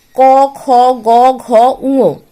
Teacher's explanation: জিভের পেছন দিক যে আমাদের কোমল তালু আছে সেই তালুতে ঠেকিয়ে যে ব্যঞ্জন বর্ণগুলো উচ্চারিত হয় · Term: কণ্ঠবর্ণ